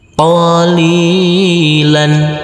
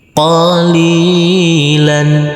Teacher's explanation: huruf lam yang berfathah tanwin ini kita kasih akhiran huruf N · huruf lam ini kita baca panjang dengan panjang dua harakat karena huruf lam berkasr bertemu huruf ya bersukun selanjutnya huruf lam